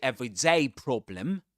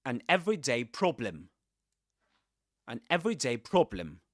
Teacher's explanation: So we accent ev, an everyday problem.